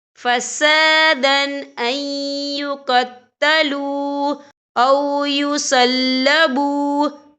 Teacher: اور آگے دیکھیں أَن يُقَتَّلُوا، یہاں پہ واو مدہ بھی ہو رہا ہے، واو ساکن ہے، واو ساکن سے پہلے پیش ہے اور اس پر چھوٹی سی مد ہے، تو ہم یہاں 3 یا 4 حرکت کے برابر کھینچ کے پڑھیں گے۔